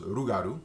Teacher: the L becomes an R sound in Louisiana French